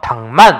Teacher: 콧소리 비음. 그래서 기역과 미음이 만나서 기역이 이응이 됐네. 교체야. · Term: 비음화